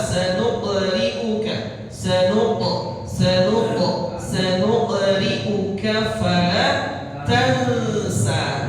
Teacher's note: Ada huruf qaf sakinah, qaf sukun, qalqalah.